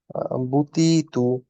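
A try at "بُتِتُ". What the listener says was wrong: তুটা একটু কমে গেছে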